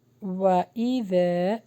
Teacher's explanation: واو پر ہونٹوں کو گول کریں، زال کا مخرج سافٹ ہوگا، زال کے بعد الف مدہ ہے، اس کو لانگ کریں۔